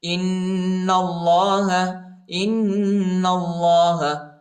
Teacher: حمزہ کو نون کے ساتھ ملائیں گے اور غنہ کریں گے ، اور نون کو لام کے ساتھ ملائیں